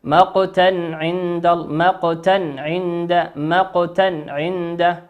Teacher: في نهاية كلمة مقتا تنوين أتى بعده عين. كلمة عند، أول حرف من كلمة عند العين، والعين من حروف الإظهار. نظهر الكلمة كما هي، نقول مقتا عند، مقتا عند، مقتا عند.